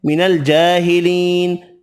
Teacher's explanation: کھڑی زبر یا مدہ بھی ایک ایک الف کی مقدار میں کھینچ کر پڑھیں گے